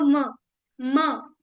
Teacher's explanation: ऐसे म है, म जो है, प फ ब भ म, म ओष्ठ का भी यूज हो रहा है और नाक का भी यूज हो रहा है। प फ ब भ म, म, म, नाक, म, नाक का भी यूज हो रहा है और लिप्स का भी यूज हो रहा है।